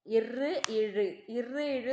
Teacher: ஆகிய இருமைகளும் மேல்வாய் நாக்கின் நுனி வருடுவதால் பிறக்கின்றன